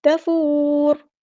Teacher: تفور، را کو ہم ساکن کر دیں گے، اور یہاں پر را جب ہم ساکن کر دیں گے وقف کرتے ہوئے تو یہاں پر پر ادا ہوگا، ہیوی ادا ہوگا